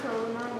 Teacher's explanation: The word karuna means compassion and it's not long. As you can see, there's a short U in it, not a long one. Don't forget that the U is nestled inside the rock.